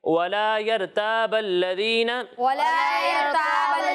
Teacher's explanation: اچھا را کو پر پڑھنا ہے، تا کو باریک پڑھیں گے · وَلَا يَرْتَابَ الَّذِينَ، وَلَا يَرْتَابَ ولا يرتاب الذين ولا يرتاب الذين ولا يرتاب الذين ولا يرتاب الذين را کو پر پڑھنا ہے ٹھیک ہے اور ذال میں سیٹی کی آواز نہیں آئے گی